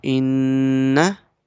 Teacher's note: We will do gunna because noon comes with shadda.